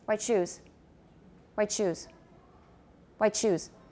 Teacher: the t and the ash will go together quickly and then we will hear the cha